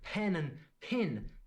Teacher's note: what's up with pen and pin they both sound like pin